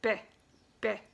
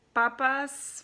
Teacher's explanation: pronounced just like in English, except a little bit closer to the front of your mouth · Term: the P